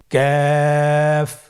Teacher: কাফ উচ্চারণের ক্ষেত্রে অবশ্যই পাতলা করে উচ্চারণ করতে হবে এবং তিন আলিফ টেনে পড়তে হবে। · কাফের মাখরাজ হলো জিহ্বার গোড়া থেকে একটু আগে বাড়িয়ে তার বরাবর উপরে তালির সঙ্গে লাগিয়ে উচ্চারিত হয়।